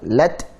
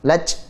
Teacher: Man thaqulat lat ya, lat huruf ta selain punya sifat syiddah kuat ya, lat juga memiliki sifat hams. Dan hams pada ta ini hanya aliran nafas atau udara saja. Lat, jangan lats, apalagi jadi c.